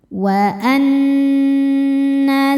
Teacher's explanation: Cara membacanya adalah berdengung. Tahan bunyi n sampai kerasa masuk hidung kurang lebih dua harakat. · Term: dhunah musyaddadah